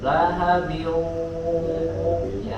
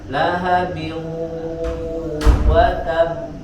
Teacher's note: Dia memiliki sifat gunnah atau dengung, maka dia didengungkan suaranya dari hidung. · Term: idgham bi gunnah